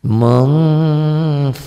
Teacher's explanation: yang tadi nun mati atau tanwin ketemu kaf dan qaf. Ini ada M-nya, bunyi M-nya tapi tetap ada eng-nya. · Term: ikhfa